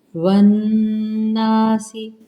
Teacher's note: ون نون مشدد اور الف مدہ کا قاعدہ، غنہ کریں گے۔ والناسی دوڑ لگا کر نہیں پڑھنا، والناسی نہیں پڑھنا، باقاعدہ غنے کو ادا کیا کریں 2 سیکنڈ تک۔